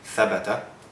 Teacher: The fathas here, all three of them, are pronounced in the front, thabata. That resembles the sound in English for bed, or better yet, bet.